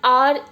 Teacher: in our pronunciation it sounds as if we are using a vowel in the beginning. Like H is silent, O-U-R. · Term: silent H